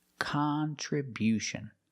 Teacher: We changed the stress to the first and third syllable.